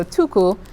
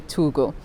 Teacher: then finally we also had a rule where voice where uh consonants like K become voiced if they're in between vowels and so tuku in its modern form is actually tugu and